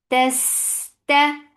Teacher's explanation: Ta is sharp letter. It has cut off the sound with its makhraj.